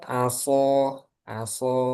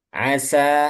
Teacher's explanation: Nanti kalau shad dibacanya tipis jadinya sin nanti. Sehingga ini bahaya nih shad sama sin yang rawan kayak dalam contoh itu.